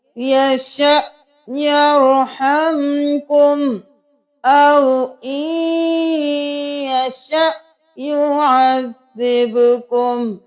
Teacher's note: آیت نمبر 54 میں دیکھ لیجئے یہاں پر حمزہ کے اوپر جزم ہے، دونوں طرف جھٹکا ہوگا